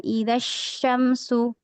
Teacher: Di huruf shin ini bertasydid ya, maka tahan idza syamsu sya ini makhraj atau tempat keluarnya di tengah lidah atau wastul lisan.